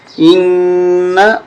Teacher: نون مشدد غنہ کریں